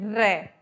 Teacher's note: सबसे पहले बोला हमने रे, रे बोलते में एक बार करके देखो, जैसे बच्चे बचपन में करते हैं ऐसे करके स्कूटर चलाते हैं ना, तो ऐसे स्कूटर चला के देखो, वो ड्र वाला स्कूटर जो होता है वहां पे जीभ कहाँ लगती है, दांतों के बिल्कुल मूल में लगती है, ऊपर वाले दांतों के